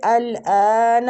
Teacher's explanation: حمزہ کو کھینچیں گے کھڑی زبر کی وجہ سے